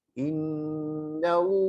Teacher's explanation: Innallaha, tebalkan Allahnya. Karena sebelumnya fathah.